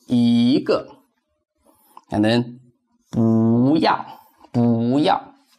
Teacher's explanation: Yi and bu change into second tone when it goes with another fourth tone syllable.